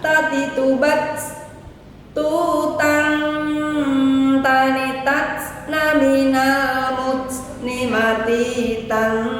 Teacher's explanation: Nah, kalau bertemu dengan ee, tanwin atau sukun, maka dihukumi dengan bacaan ikhfa. Yaitu samar-samar membacanya. Nunnya tidak boleh jelas dan panjang harakatnya dua. Kemudian ta juga memiliki sifat hames. · Nunnya tidak boleh jelas dan panjang harokatnya 2. Kemudian ta juga memiliki sifat hamas, jadi ada sedikit desisnya